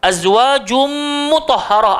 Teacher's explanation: ada idgham ma'al gunnah, tanwin bertemu mim, kena dengung 3 harakat